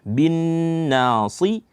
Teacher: Gunnahnya itu ada pada derajat akmal yang sempurna dia